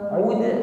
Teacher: huruf dal sukun pantulkan ud ringan saja pantulannya, tepatnya qalqalah sughra